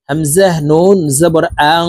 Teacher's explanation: তো এখানে দেখুন, এই যে নুনের উপরে জজম আছে, এই নুনকে নুন সাকিন বলা হয়। তো দেখুন, নুন সাকিনের পরে ইকফার হরফটা আসছে, এই কারণে এই নুন সাকিনকে নাকের ভিতরে লুকাইয়া গুন্নার সহিত পড়ব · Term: ইকফা গুন্না